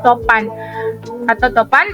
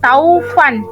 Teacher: vokal o menjadi au